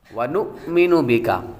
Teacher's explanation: نون کے بعد حمزہ ہے جو یہاں پر جھٹکا دے کر پڑھیں گے، اور بی کا یہاں پر بھی کاف باریک ہے۔